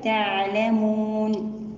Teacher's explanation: تعلمون، في كلمة تعلمون عندما ننطق النون هنا ننطقها كاملة عند الوقف ونعطي التوسط لحرف العين، وعند الوقف على كلمة تعلمون هنا يوجد لدينا مد عارض للسكون بسبب تسكين النون